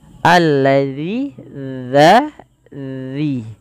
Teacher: ujung lidah kita menempel dengan gigi